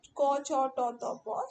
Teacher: সেই তালিকার যে প্রথম বর্ণগুলো ক, চ, ট, ত, প সেগুলোকে আমরা বলছি অঘোষ, অল্প প্রাণধন